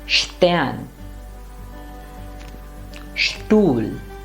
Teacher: So the next consonant combinations that we are going to take a look at are two, st and sp. Now when a word begins with sp or st, the pronunciation becomes shp or sht.